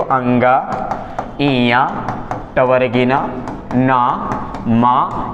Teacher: 5वां जो वर्ण होता है वो नाक से बोला जाता है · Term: नासिकीय वर्ण